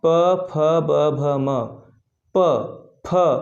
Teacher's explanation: जब हम इन शब्दों का उच्चारण करते हैं तो हमारे दोनों ओंठ एक बार आपस में टच होते हैं, प फ, इसलिए इसे ओष्ठ के अंतर्गत रखा गया है।